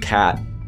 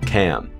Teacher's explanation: I might pronounce that closer to a diphthong A, especially before nasal consonants.